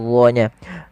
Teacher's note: huruf d dalam melafalkan ujung lidah menempel dengan Gigis dari atas pangkal lidah terangkat sehingga menebal suara